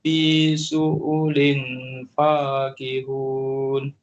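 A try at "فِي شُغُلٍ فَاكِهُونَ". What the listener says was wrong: Huruf ni huruf rin, syu'u, bukan syu'u. Kalau syu'u dia jadi huruf ain. Dia huruf rin, syu'ulin fakihun. Saya ulang Inna ashabal jannatil yawma fi syughulin fakihun.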